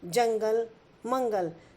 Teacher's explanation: अनुस्वार, जैसे जंगल, मंगल। जब हम अनुस्वार शब्दों का उच्चारण करते हैं तो ध्वनि हमारे नाक से निकलती है